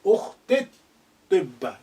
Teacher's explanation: the lengthening e sound becomes slightly shortened